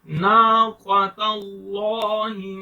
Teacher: لام سے پہلے زبر ہے پیش ہے تو موٹا کر کے پڑھیں گے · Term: heavy letter